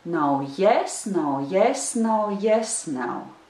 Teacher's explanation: So it starts with the unstressed syllable no, and it also ends with the unstressed syllable also no. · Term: rhythm